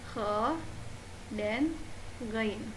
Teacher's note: Kha dan ghain, yaitu huruf tenggorokan bagian atas.